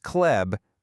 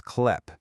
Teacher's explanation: You see, it's spelled with a b, a b sound at the end. But because it's at the end of the word, we say it with a p, a p sound